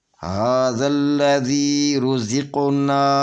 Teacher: یہ قاف جو ہے قاف حروف قلقلہ میں سے ہے اور قاف ساکن ہے، یہاں پہ صغرا قلقلہ ہوگا یعنی چھوٹا قلقلہ ہوگا